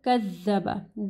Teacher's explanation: زال کو جو ہے زال کے مخرج کا خیال رکھنا ہے. جب آپ زال پڑھیں گے تو آپ کی زبان کی نوک اوپر کے دو دانتوں کے پاس آئے گی اور اس کو کذبہ نہیں پڑھنا، کذبہ.